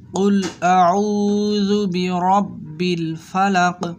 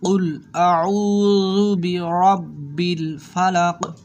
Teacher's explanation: এই যে কফটা একটু ফুটেই বলতে হয়